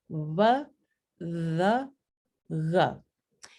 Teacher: En estas tres consonantes las llamamos aproximantes porque el articulador activo y el articulador pasivo se acercan. Entonces, uno viene más cerca al otro, pero no hay tanta fricción como en las fricativas.